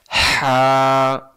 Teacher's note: লম্বা হা হলকের মধ্য থেকে শোষ করে পড়তে হয়